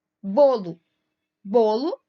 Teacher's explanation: bolo tem a penúltima sílaba tônica da palavra que tem a penúltima sílaba tônica são consideradas paroxítonas